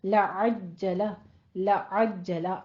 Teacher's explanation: عین وسط حلق سے ادا کریں گے، جیم پہ تشدید ادا کریں گے، سختی سے پڑھنا ہے